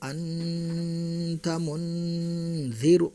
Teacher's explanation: تنوین نون ساکن کے بعد حروف اخفاء کے 15 حرفوں میں سے کوئی بھی حرف آئے تو اخفاء حقیقی ہوں گا، یعنی تنوین نون ساکن کے آواز کو ناک میں چھپا کر غنہ کے ساتھ پڑھیں گے